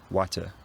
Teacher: voiceless tap which is probably the most common for him or it might be water with no tap at all